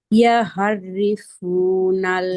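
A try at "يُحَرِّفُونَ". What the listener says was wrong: ইয়া না, ইউ, ইয়া পেশ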